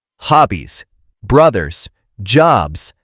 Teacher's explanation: Let's practice that voiced Z sound. It should vibrate in your throat. Put your hand on your neck and feel it.